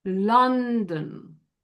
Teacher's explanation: So the uh in this accent goes back farther on the tongue